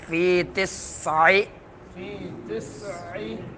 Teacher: تسع سین میں سیٹی نکلے گی، عین کو درمیان حلق سے ظاہر کرنا ہے۔